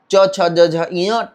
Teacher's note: च वर्ग का उच्चारण तालु से होता है